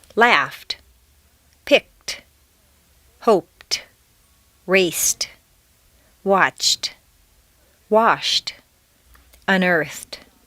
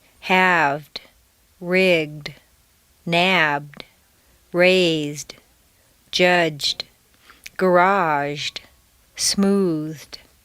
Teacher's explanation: T replaces D in the past tense after an unvoiced consonant sound. F, k, p, s, ch, sh, f, except T.